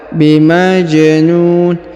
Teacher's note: perhatikan huruf ja berharakat sukun maka kita pantulkan atau kita qalqalahkan bimajnun kemudian huruf NU dibaca panjang boleh dua harakat boleh empat